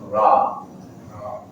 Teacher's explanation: Ujung lidah bertemu dengan gusi dua gigi seri atas.